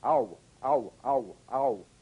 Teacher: Another diphthong, a combination of the largest lip opening, number 5, ah, with the smallest, number 1, ooh. Again, using that quick American glide.